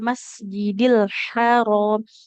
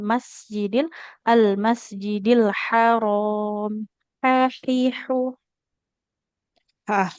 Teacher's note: huruf ha di tengah tenggorokan